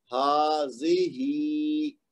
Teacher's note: درمیان میں جو زال ہے اس کو 1 حرکت دینی ہے اور پہلے والے ہا کو اوپر کی طرف 2 حرکت کھینچنا ہے اور آخری والی ہا کو نیچے کی طرف 2 حرکت کھینچنا ہے